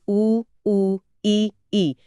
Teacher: ये चारों संवृत स्वर हैं। तो इसमें मुंह लगभग बंद रहता है।